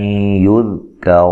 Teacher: حمزہ کو تحقیق سے ادا کرنا ہے، نون ساکن کا ادغام مع الغنہ ہے، ذال کو ہلانا نہیں ہے. کاف کو باریک، را کو موٹا.